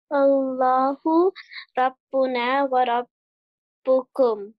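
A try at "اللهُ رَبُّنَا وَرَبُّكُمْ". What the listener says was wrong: You have to pronounce the ra, it will be thick. Rabbuna ra ra ra. Allahu rabbuna wa rabbukum.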